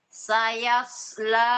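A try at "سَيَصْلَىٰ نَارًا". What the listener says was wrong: Nah, sod, Ibu. Sod tebal.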